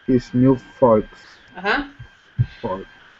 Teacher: I say the L just a little bit. Because I do pronounce the L in this one.